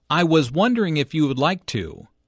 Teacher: nervous and does not want to appear too direct or bold notice how the question goes up at the end which shows that he is not overly confident